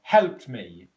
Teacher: So what we've got in the phonetic spelling of this word is the P, the T, the ED ending here is just simply pronounced as a T